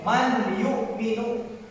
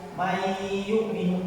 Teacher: Gak boleh man yu'minu, tapi ininya disamakan, nunnya disamakan, dimasukkan langsung ke ya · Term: idgham